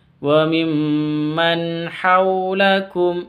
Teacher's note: Wa mim tasydid dengung bacanya dengung karena gunnah musyaddadah. · nun sukun bertemu dengan ha, jelas bacanya karena izhar halqi.